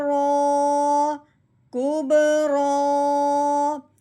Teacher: را کے اوپر کھڑی زبر آنے کی وجہ سے اس کو 1 الف کے برابر لمبا بھی کیا جائے گا، موٹا بھی کیا جائے گا. رو کھڑی زبر رو، کوب رو.